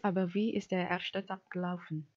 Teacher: The first one is "Aber wie" and the second one is der erste Tag gelaufen?" The intonation phrase is divided by the lengthening of the final syllable, which is from the word wie, and then it is followed by a pause. · the respondent stressed the auxiliary verb, which is ist. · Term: intonation phrases